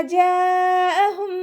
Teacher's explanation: മദ്ദു വാജിബ് മുത്തസിൽ 4 or 5 count നിർബന്ധമായിട്ട് നീട്ടിക്കൊടുക്കാൻ ശ്രദ്ധിക്കുക